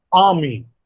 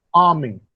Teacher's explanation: A receives greater force, that is, A is articulated with greater breath force, and me is articulated with lesser breath force. So a syllable that receives greater breath force is called a stressed syllable.